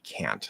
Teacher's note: we push out that t that's the easiest way to make it clear